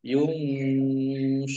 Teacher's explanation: nun sukun bertemu dengan huruf shod, bacaan ikhfa, dibaca samar-samar.